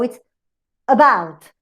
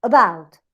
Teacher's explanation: you have an unstressed syllable, but in bout, the movement of the pitch goes high. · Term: pitch movement